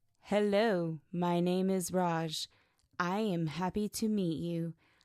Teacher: every sentence sounded flat, like a robot.